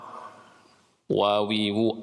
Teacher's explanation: beda dengan wau itu enggak enggak nempel atas sama bawah